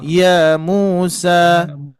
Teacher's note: jadi jangan sampai ya Musa itu kepanjangan dikit aja dua ketukan